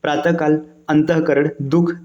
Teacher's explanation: देखिए ह जो होता है, ह आपका घोष मतलब सघोष व्यंजन है, लेकिन विसर्ग क्या है? विसर्ग की ध्वनि अघोष मानी जाती है।